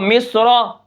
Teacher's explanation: रा के ऊपर ज़बर है तो यहाँ पर हम रा को मोटा पढ़ेंगे